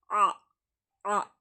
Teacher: தொண்டையின் நடுப்பகுதில இருந்துதான் எடுக்கணும் இந்த ஐன் எடுத்த மாதிரி எடுக்கணும் அ ஓகேங்களா அப்புறம் யா யா ஓகே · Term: ஹம்ஸா